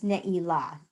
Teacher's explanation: I think that we do a more Ashkenazic kind of pronunciation in shul a lot of times, and we say Neila, but it's Neila, the accent's on the last syllable